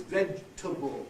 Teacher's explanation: Whatever the able ending is, it never has that clear A that it has in the stressed form of the word. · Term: the weaker vowel